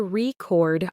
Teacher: He put the stress on the second syllable, turning the noun record into the verb record.